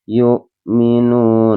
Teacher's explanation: Wawu sukun sebelumnya huruf yang berharokat dhammah bacaan panjangnya dua harokat mad tabi'i bil gha.